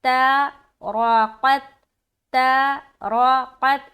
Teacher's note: اس میں ہا کی ادائیگی صحیح طریقے سے کرنا اور اس را کو موٹا پڑھنا اور قاف کو بھی موٹا پڑھنا